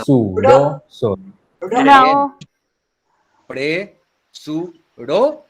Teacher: Presurosos. Se carga la voz en la sílaba ro. Y la sílaba ro es la penúltima, porque la última es sos. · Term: palabra llana